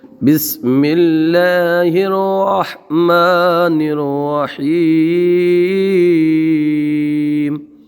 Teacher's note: اللہ کے لام سے پہلے حرف میم پر زیر ہے، اس لیے ہم اللہ کے لام کو یہاں باریک پڑھیں گے